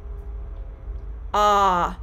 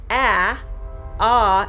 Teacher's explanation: of the short o the jaw is held more open and the back of the tongue is held lower than any other sound in the american english vowel sound pronunciation very open ah so if you look at ah ah is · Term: short o vowel sound